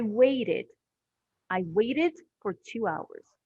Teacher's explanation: we have the id so we add an extra syllable because the word ends with a t sound